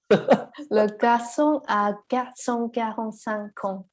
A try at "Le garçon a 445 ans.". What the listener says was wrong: Quand tu dis 400, ça ressemble à garçon. On dirait le 400 à garçon 45. On dirait un peu l'inverse. Le garçon. En fait, alors déjà, que, ge, ouais, c'est très proche en plus déjà. On a déjà deux consonnes